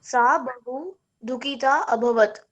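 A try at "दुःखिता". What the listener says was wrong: Dukhita. Dukhita. There is a visarg also, right? So you have to pronounce that also. Dukhita. Dukhita.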